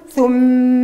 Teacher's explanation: انا باش نطول زمن الغنه في الميم المشدده